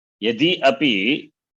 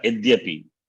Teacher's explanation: Yadyapi. Because Ikara, the vowel, is replaced by the semi-vowel